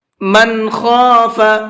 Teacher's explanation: من خاف، یہ نون ساکن کے بعد میں خا ہے اور خا اظہار کے حرفوں میں سے ہے، تو اس نون کے اندر اظہار کر کے پڑھیں گے، غنہ اخفا کچھ بھی نہیں کرنا ہے